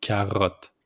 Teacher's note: Just put the accent on the R with the throat.